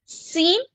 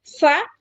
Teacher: सीन में जबान अंदर सा में जबान बाहर और दांतों को टच ऊपर के दातों के टिप को टच